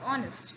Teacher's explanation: any word like for example I think honest I take honest in honest we we do not pronounce h